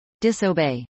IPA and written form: ˌdɪsəˈbeɪ (disobey)